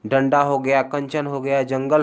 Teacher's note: अनुस्वार के उच्चारण में वायु नाक से निकलती है और उच्चारण झटके के साथ होती है।